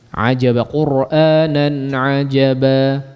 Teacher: Kadar mad iwad berapa? 2 harakat saja, jangan lebih. Jangan lebih dari 2 harakat.